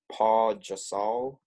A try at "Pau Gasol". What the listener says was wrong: Pau Gasol, not Paul Gasol.